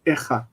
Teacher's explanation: In pause, the tone syllable lengthens, and then it has that effect on the patach that it can't be there, and it becomes echat